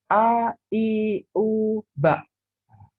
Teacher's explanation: Huruf A, makhrajnya dari tenggorokan yang terjauh di bagian bawah. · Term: huruf hamzah